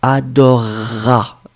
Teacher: C'est adorer plus a, mais le e phonétiquement disparaît